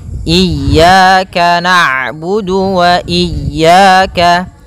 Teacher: ain itu punya sifat namanya bainiyah, yaitu bacaan di antara syiddah dan rokhawah. Kalau syiddah suaranya tertahan, kalau rokhawah suaranya mengalir, maka di antara keduanya.